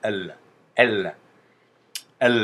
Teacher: avec la langue qui reste coller sur les dents, derrière les dents quand on prononce ça.